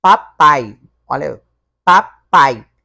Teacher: O A fica junto com o I, no finalzinho. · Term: ditongo oralizado